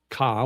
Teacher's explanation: There's ka, which is middle tone.